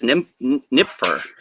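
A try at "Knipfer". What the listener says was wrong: You pronounce the K.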